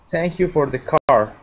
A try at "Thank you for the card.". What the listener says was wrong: Okay, that is a card with a D at the end. Card.